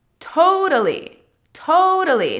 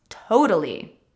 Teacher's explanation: notice that the second T sounds like a D because in American English that is what happens when a T is between two vowels